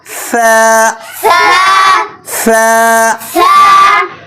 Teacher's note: জিহ্বার আগা সামনের উপরের দাঁতের আগার সঙ্গে লাগিয়ে নরম করে উচ্চারণ করতে হবে